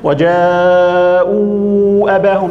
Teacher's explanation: ده المنفصل بمد أربع أو خمس حركات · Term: مد منفصل